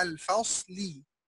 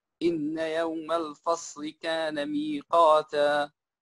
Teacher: نرق الفاء ونفخم الصاد